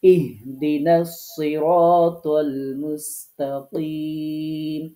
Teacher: আপনি যখন ইহদিনাস সিরাতাল মুস্তাকিম, এই যে ইহদিনার, এইখানে যে হা, এই হাটা, তো এটা ধাক্কা দিয়ে উচ্চারণ করতে হয় হলকের শুরু হতে। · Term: গোল হা